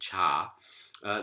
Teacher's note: This aspirated affricate, cha.